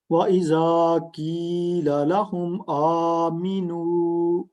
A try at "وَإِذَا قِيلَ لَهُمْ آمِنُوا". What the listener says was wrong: مین نہیں لمبا کرنا، آ لمبا کرنا ہے. آمینو.